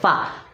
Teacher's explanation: फा जुबान, दांतों का सिरा नीचे के होंठ से मिलकर, ये हमारे दांत का सिरा है, ए वाला हिस्सा, ए वाला हिस्सा, फा यहाँ से अदा होता है। ए दांतों का सिरा और नीचे के होंठ से मिलकर फा अदा होता है